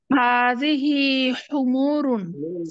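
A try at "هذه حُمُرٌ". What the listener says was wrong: হুমুরুন, টান হবে না কোনো, হাদিহি হুমুরুন।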